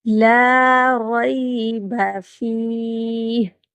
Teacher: لام کو تھوڑا سا لمبا کریں گے اور را کو پر پڑھیں گے۔ فی، وقف کی صورت میں آخر میں ہا کی آواز آنی چاہیے۔